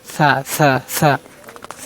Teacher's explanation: জিহ্বার সামনে দুই দাঁত যে আছে ওই দুই দাঁতের আগার সাথে আপনার জিহ্বার আগাটা লাগাবেন। সা উচ্চারণ করবেন সানা সানা সা সা সা সা উচ্চারণ করবেন সা। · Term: সা হরফ